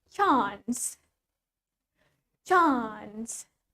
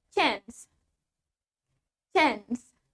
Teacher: Well, in British English, remember, we have longer A. Kita punya bunyi A yang jauh lebih panjang.